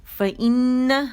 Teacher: فا باریک، آواز ایک کاؤنٹ کے لیے اوپر جائے گی، اور یہ ای جو آواز آ رہی ہے یہ حمزہ قطع کہلاتی ہے، قطع، ٹھیک ہے.